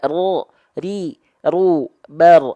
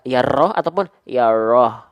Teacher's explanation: pastikan dia tetap ada getarannya karena dia takrir